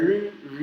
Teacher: Parece que a gente vai falar ra, mas é r, a língua não treme.